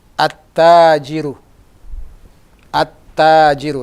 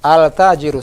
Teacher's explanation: Lamnya masuk ke huruf ta.